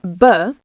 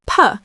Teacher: Feel the vibration in your throat for b? That's voiced. For p, there's no vibration, making it unvoiced.